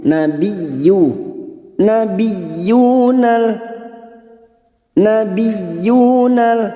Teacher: masuk pada huruf ya yang bertasdid hanya masuk tanpa ditahan lama-lama tanpa mendengung